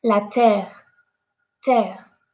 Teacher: If there is one R, two R, ten R, a thousand R, we are all going to pronounce it the same, as if there was just one R. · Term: double R